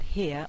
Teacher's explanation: if i say the word here on its own in this particular accent i don't say the r